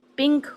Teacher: پن، پن پن، absolutely پن پڑھیں گے، لیکن اگر پن کے آخر میں کے جوڑ دیں تو وہاں نون کی آواز کچھ دب جاتی ہے، وہ PIN کے پنک ہو جاتا ہے۔